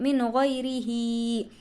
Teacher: और हा को इसलिए खींच रहे हैं कि इसके नीचे खड़ी ज़ेर है